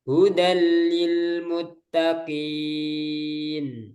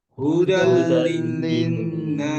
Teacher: Nah, jadi langsung masuk ke lam kemudian tanpa gunnah. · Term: idgham